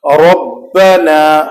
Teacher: را کو ہمیشہ پر پڑھیں گے جب یہ مفتوح ہو اور مضموم ہو